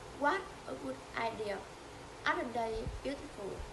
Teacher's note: The tone rises at the beginning and gradually falls at the end.